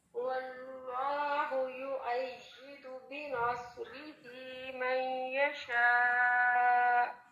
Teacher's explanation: چونکہ را کے نیچے زیر ہے تو اس میں تکرار اس طرح نہیں ہوتی، نہ یہ ہیوی ہوتا ہے